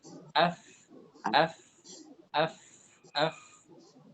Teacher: Dari perut bibir dan gigi atas. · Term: makhraj al-fa